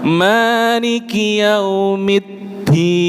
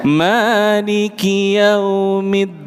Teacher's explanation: huruf dal itu tidak boleh keluar nafas ketika diucapkan. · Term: jahr